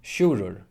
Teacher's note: The g always falls away to modern Faroese and the i turns into a j and doesn't support a syllable anymore. · And the ð goes silent, but is still written in modern Faroese. · The first syllable is now carried by the u, the u is lengthened.